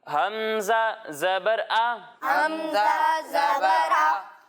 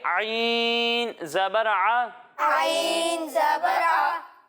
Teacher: جب ہم حمزہ کی ادائیگی کریں گے تو اسے حلق کے نچلے حصے سے پڑھیں گے، اور جب ہم عین کی ادائیگی کریں گے تو اسے حلق کے درمیانے حصے سے پڑھیں گے